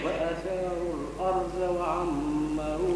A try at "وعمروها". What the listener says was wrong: لا ما قلش وعمروها وعمروها بالتخفيف وعمروها